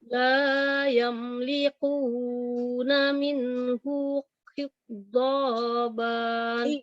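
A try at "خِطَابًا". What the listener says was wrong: Kho-nya yang benar. Khitoba.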